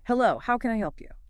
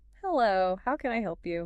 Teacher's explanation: with a completely flat, monotone, bored-sounding voice